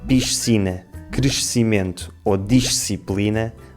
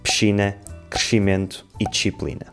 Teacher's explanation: a forma como transformamos o som “sc” em “ch”